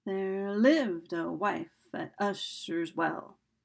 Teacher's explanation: So it starts out with an unstressed syllable. Stressed, unstressed, stressed, unstressed, stressed. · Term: iambic meter